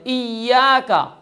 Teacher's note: جیسے ایاک شد کے ساتھ ہے، یا کو مشدد ادا کرنا ہے